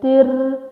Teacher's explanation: I'm saying tir very strongly because it's ra shadda